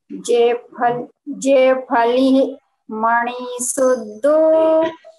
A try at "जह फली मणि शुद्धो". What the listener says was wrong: जह छोटी देख करके पढ़ी। मात्राएं छोटी बड़ी छोटा बड़ा देख कर।